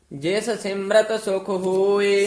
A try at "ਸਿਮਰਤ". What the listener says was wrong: ਸਿਮਰਤ ਨਹੀਂ ਹੈ, ਜਿਸ ਸਿਮਰਤ ਰਾਰਾ ਪੂਰਾ।